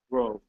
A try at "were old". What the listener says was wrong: Almost. You're still pronouncing an O. You're saying whoa. It's not whoa. It's were, like her. I want you to try saying her old, like that. Okay, so instead of a W at the beginning, say an H. Hurled.